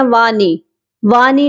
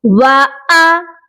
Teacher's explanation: वाव की आवाज अलग और हमजा की आवाज अलग आएगी।